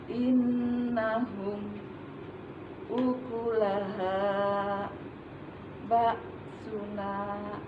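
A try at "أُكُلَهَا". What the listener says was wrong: Ha tidak perlu ha. Biasa saja ukulaha ya.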